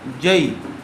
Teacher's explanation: ساکن سے پہلے زبر آیا ہوا ہے اس لیے لین کا قاعدہ ہوگا، اس کو نرم آواز سے جلد ادا کریں گے۔